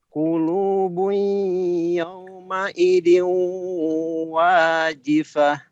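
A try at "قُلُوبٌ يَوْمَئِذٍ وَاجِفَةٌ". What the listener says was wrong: Yauma idhiu, bukan diu. Idhiu wajifah.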